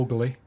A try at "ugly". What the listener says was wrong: He gets an extra syllable in the word ugly. Ugly. Ugly. Ugly.